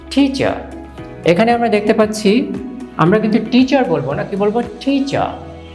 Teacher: Consonant T. R is not pronounced here.